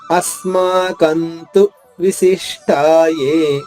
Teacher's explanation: అస్మాకంతు మా అని చెప్పకూడదు, పెదవులు కలవకూడదు.